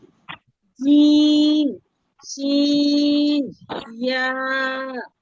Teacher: 6 নম্বর মাখরাজ জিহ্বার মধ্যখান তার বরাবর উপরে তালুর সঙ্গে লাগাইয়া